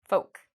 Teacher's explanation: So with the word folk, there's no L pronunciation